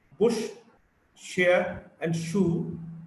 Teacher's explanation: Sh is a voiceless post-alveolar fricative.